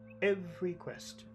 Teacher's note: The accented syllable is every.